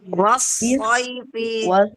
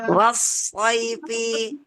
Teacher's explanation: Hurufnya seperti S kita, hanya saja ditebalkan.